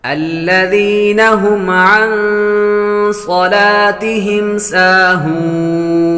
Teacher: ہم پر غنہ نہیں کریں گے، میم ساکن کے بعد با اور میم کے علاوہ کوئی اور حرف آ جائے تو غنہ نہیں کریں گے۔